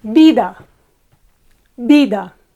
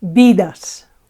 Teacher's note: The penultimate, the second one from the end, no? Is accentuated.